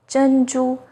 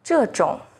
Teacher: ZH sounds like the first sound in jerky, with the tip of the tongue raised against the hard palate